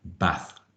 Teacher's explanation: somebody from a different region of the country might say bath using a short uh vowel sound